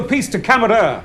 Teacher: the way he enunciates camera with a rolling R is so dramatic and very on brand last truly has a natural ability to